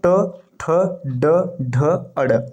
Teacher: ट ठ ड ड ढ अड़ ये मूर्धन्य होता है